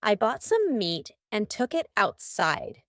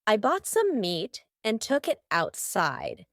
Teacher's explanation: almost each of these words that end in t have a stopped T